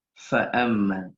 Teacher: kalau hamasnya keluar fa'amma jadi terdengar jelas huruf fa